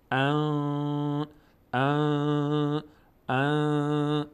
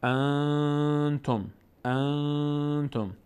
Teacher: الان زبان من هیچ نقشی نداره در تلفظ این صدا از بینی میاد · رقی هم نیست اون موقع نون از مخرج خودش ادا نمیشه صدا از بینی خارج میشه مقداری هم در هنگام تلفظ صدا رو در بینی نگه می‌داریم بهش میگیم اخفا